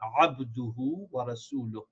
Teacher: this should be a abduhu, not abduhu with a alif or hamza. It should be with a ayn